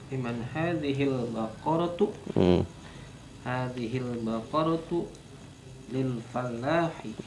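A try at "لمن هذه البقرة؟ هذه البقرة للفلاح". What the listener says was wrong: Sahih.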